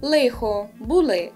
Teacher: вживання такого м'якого альвеолярного «л» – «л». Як ми чули і на Бойківщині, і на Надніпрянщині, також поширене тут.